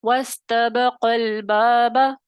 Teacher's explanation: جب ہم ان کو ملا کے پڑھیں گے وصلن تو حرف مدہ گر جائے گا, حذف کے قاعدے میں حرف مدہ گر جائے گا. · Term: حذف کا قاعدہ